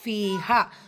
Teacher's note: பீலையும் ஹாலையும் ரெண்டு ரெண்டு ஹரக்கத் நீட்டணும். ஏன் யா மதாவும் இருக்கு அலிஃப் மதாவும் இருக்கு.